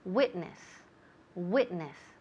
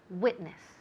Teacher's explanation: now the emphasis falls on the first syllable